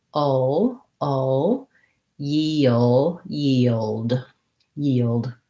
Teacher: i have a dark l there it has a little bit of a schwa before it and then i have to go to the d so um